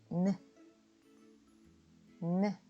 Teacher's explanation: 다음으로 n의 기본 음가는 느인데요. 입모양을 만든 상태에서 혀끝을 윗니 뒤쪽 잇몸이 시작하는 곳에 대면서 느 하고 콧소리를 내시면 됩니다.